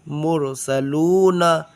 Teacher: اس را کو موٹا پڑھیں گے